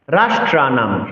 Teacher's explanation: অনুসারের জন্য আমরা মহসন্ত উচ্চারণ করব অর্থাৎ ম এর অর্ধেক উচ্চারণ করব